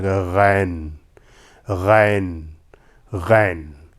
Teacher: जब गैन निकलता है तो वो भी ज़बान के आखिरी हिस्से से और ज़रा भारी आवाज़ बना कर